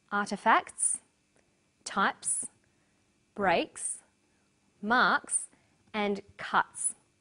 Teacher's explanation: the second way s is pronounced at the end of a word is s it's pronounced this way after voiceless consonants p t c f